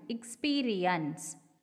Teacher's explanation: So here in the word experience, the first ear in experience is falling, whereas the second one is rising.